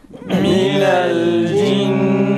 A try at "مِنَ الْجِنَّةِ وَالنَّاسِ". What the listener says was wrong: Minel cinneti kelimesini okurken nunu uzatmayalım. Minel cinneti şeklinde biraz uzatılıyor. Ona dikkat edelim. Minel cinneti ven nas.